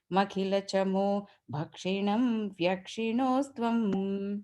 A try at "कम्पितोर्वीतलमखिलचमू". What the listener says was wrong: Kampitor V, the long V has to come there, okay?